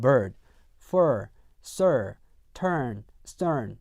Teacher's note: 이 R 사운드는요, R 사운드, 즉 R 색채, R 컬러가 있는 모음이에요.